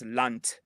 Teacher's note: they're taking the voicing away from the D